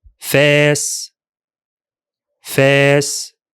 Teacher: The Alif is elongated and smooth.